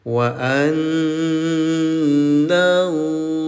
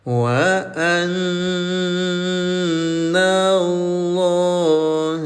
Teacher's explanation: Nun bertasdid, dengungkan cara bacanya selama 2 rakaat ya, namanya gunah.